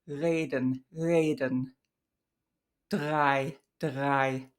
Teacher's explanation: the voiced uvular approximant, which is that slightly more vocalic, but not vocalic sound that has like more airflow. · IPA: [ʁ̞]